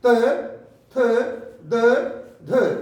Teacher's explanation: त, थ, द, ध यानी दंत स्पर्श हो रहा है दंत से, और इसलिए हम इसको दंत भी का उच्चारण स्थान देते हैं।